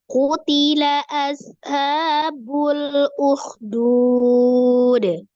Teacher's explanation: Kemudian yang disukunkan di akhir ini adalah huruf dan salah satu huruf qalqalah, maka harus dipantulkan. Qalqalahnya masuk kategori qalqalah kubro karena di akhir.